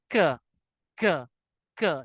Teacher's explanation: देखिए, कॉफ जो है ना, वो हलक की बिगिनिंग से स्टार्ट होता है, बिल्कुल हलक जब हमारा शुरू हो रहा है, और हलक शुरू होने से पहले थोड़ा सा आगे आए, नॉट टुवर्ड्स द हलक बट टुवर्ड्स द माउथ, वहां से के निकलता है